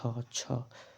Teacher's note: छ का उच्चारण स्थान देखो छ तालू आ रहा है